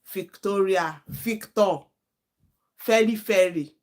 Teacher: sometimes they will pronounce f instead of v